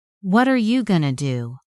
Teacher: your ear should land on what, go, and do first. The little words in the middle get lighter